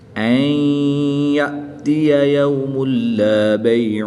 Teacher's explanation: دو پیش کی تنوین کے بعد لام حروف یرملون میں سے ہے تو یہاں پر ادغام بلا غنہ ہوگا، یعنی کہ بغیر غنہ کے ادغام کر کے پڑھیں گے۔